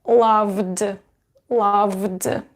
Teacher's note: just d so and you will pronounce it as loved loved because v is voiced and so we need a voiced consonant